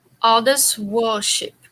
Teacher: Worship. Keep the R out of it.